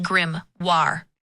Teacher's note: The emphasis is on the second syllable.